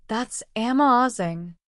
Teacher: That's amazing. Instead, my voice would rise and fall with excitement. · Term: inonation